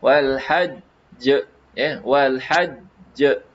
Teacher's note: Tapi disebabkan ada sabdu, ya, dia seolah-olah ada 2 jim, ya, seolah-olah ada 2 jim di sini, satu jim mati, satu jim hidup